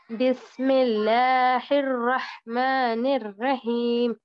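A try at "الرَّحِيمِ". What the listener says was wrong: निर्रहीम, रा को मोटा पढ़ना है।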